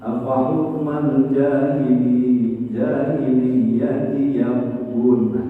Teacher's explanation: ba-nya itu adalah huruf qalqalah, harus ada pantulan. Tapi karena adanya di tengah, yang bukan di akhir, maka qalqalahnya sugro, kecil, pantulannya kecil.